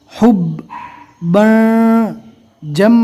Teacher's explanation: میم کو ذرا بھی نہ کھینچے، زبر زیر پیش کو حرکات کہتے ہیں، اس کو بالکل نارمل پڑھنا ہے، ذرا بھی نہیں کھینچنا۔ حب جم، جیم کو میم سے ملانا ہے، میم کے اندر ایک الف کے برابر گننا بھی کرنا ہے